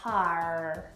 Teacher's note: pronounces the R at the end of this word